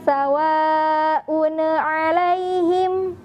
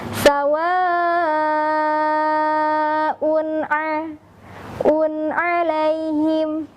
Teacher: Tapi huruf nunnya dibaca dengan mengalirkan suara. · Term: izhar